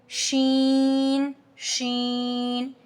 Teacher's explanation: light letter है सीन सी सीन सीन जुबान की नोक और दांतों के दरमियान से हमारे पास सीन अदा होता है tip of the tongue near upper teeth ठीक नेक्स्ट है शीन शन middle of tongue with plate